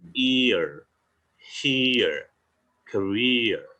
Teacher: Contohnya kita ngomong ear, here, career. Jadi bunyinya i dan e. Jadi diftong itu kebanyakan belakangnya e